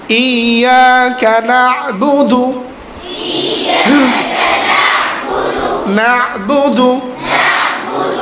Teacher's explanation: আইনটা হচ্ছে কি হলকের মাঝখান থেকে উচ্চারণ হবে। হ্যাঁ, আইনটা মধ্যবর্তী হরফ, এটাকে বেশি ডাবানো যাবে না, বেশি কমও করা যাবে না।